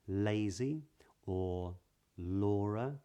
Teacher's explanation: the tip of the tongue touches the roof of the mouth for an L in this accent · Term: L Sound, L sound